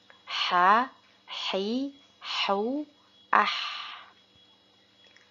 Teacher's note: Huruf ha terdengar seperti suara pernapasan yang jernih dan sangat jelas.